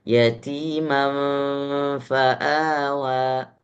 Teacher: Ikhfa, sembunyikan gunnah ke dalam fa.